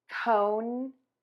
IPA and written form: koʊn (CONE)